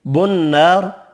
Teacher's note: نون مشدد پر غنہ کریں گے اور را پر پڑھنا ہے